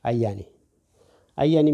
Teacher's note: It's the double Y here really strong when you pronounce it. Ayani. Ayani means a tree, but also can mean a medicine.